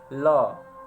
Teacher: ल पार्श्व, जिसके उच्चारण में हवा जीभ के पार्श्व बगल से निकल जाता है। ल ठीक है, बगल से हवा निकल जाएगा, ल ठीक है, तो हो जाएगा।